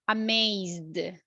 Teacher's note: We have vibration. So we are going to say it with the letter D.